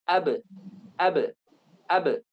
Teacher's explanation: Maka ketika kita ingin kita lepaskan makhrajnya, huruf qalqalah ini, ketika makhrajnya tertutup, misalnya ab, kita ingin lepaskan, karena hurufnya ini jahar, tidak mengandung nafas, maka yang keluar adalah pantulan.